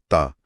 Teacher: ता एक पतली तेज आवाज है। ता जबान की नोक दांतों के पीछे।